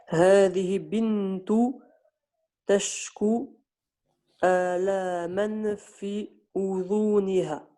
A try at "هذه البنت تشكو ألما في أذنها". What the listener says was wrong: Par contre, ici, juste le lemme, on ne l'a pas entendu. هذه البنت. هذه البنت تشكو ألما في أذنها.